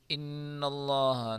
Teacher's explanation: نون مشدد ہے، گنہ کے ساتھ پڑھیں گے